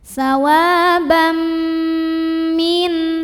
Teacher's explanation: Jadi ini sawabam, m dan tahan dengungkan. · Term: idgham bi gunnah